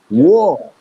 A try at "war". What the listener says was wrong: R, war. W it's actually WOR. The A is a different sound. War.